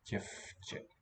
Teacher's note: Okay, I think the V devoices. Děvče. Because the ch following is voiceless.